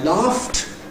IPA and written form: lɑːft (laughed)